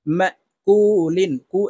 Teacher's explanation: ওয়াও পেশ কু লাম দুই জের লিন মা কুলিন কু এখানে তিন আলিফ টেনে লামকে সাকিন করে ফেলবো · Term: মধ্যে আরজি